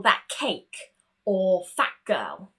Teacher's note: You can see my mouth moves into that P position at the end of that first word. Now, if the T is followed by a K or a G, we want to go straight for that K sound